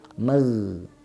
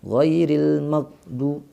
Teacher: gha ya, ada bunyi suara yang mengalir magh. Nah, udah terputus ghairil maghdu, terputus namanya ya. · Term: gha yang sukun